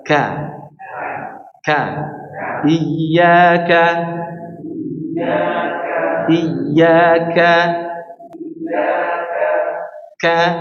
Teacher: Huruf kaf ini malah ditampakkan suara anginnya.